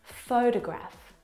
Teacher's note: in the first example, photograph, the first syllable is the stressed syllable.